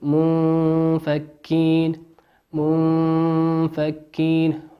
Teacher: نون ساكنة أتى بعدها حرف الفاء، والفاء من حروف الإخفاء